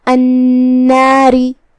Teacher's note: کلمت النار یہاں نون پہ تشدید ہے، ہمیں 2 حرف کے برابر نون کو ادا کرنا ہے. آخری میں را کے نیچے زیر ہے تو را کا حکم ہے ترقیق، مطلب ہم اسے ہلکی آواز میں پڑھیں گے